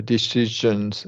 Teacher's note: Yeah, it's a little bit je sound. The zh sound is like a j sound, but so it's this voiced sh, right?